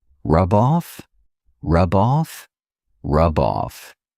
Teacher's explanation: I can take that B sound and connect it to the next word, but I have to combine them together. I have to see them as one word.